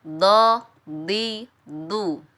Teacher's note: Huruf dod ini pertemuan antara sisi lidah dengan gigi geraham atas.